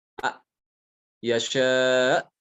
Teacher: A itu tenggorokan paling bawah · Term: hamzah